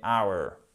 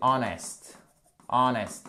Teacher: c'est un de ces rares mots en anglais où on ne prononce pas le H